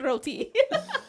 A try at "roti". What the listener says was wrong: We don't roll the R. We just say roti. Roti. Yeah, that's the emphasis. Like roti. Roti. Yeah, roti.